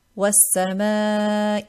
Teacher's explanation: Now this ma, I made light, preceded by letter of tarqeeq.